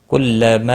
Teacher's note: کلما مد منفصل ہے، جب بھی حروف مدہ کے بعد بشکل حمزہ آتا ہے تو وہاں پر مد منفصل لگتی ہے، تین الف کے برابر کھینچ کر پڑھیں گے